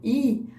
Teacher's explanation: quando eu digo i a língua tá bem para frente